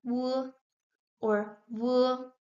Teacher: depending on the region and on the dialect this W is pronounced either W or V V more similar to a U or to a V.